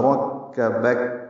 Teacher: سے ملانا، با کو پھر کاف سے ملا دیں گے وقفاً، کاف ساکن ہے اب وقف کرتے ہوئے اس لیے اس پہ ہمس ہوگا